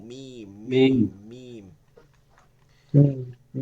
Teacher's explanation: দুই ঠোঁটের শুকনা জায়গা হইতে শুকনা জায়গা বলতে সামনের দিকটা